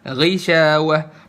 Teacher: Pada saat bacanya kasroh, tafkhimnya itu adna, lebih rendah. Jadi level ketebalannya nggak setebel yang biasanya, tapi tetap tebel. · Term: adna tafkhim